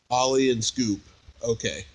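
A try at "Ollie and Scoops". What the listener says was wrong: Scoop, plural.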